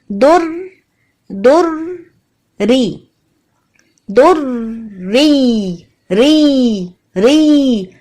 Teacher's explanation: رو کو بالکل باریک رکھیں گے کیونکہ رو کے نیچے زیر ہے. جب بھی رو کے نیچے زیر ہوگا تو رو باریک رہے گا.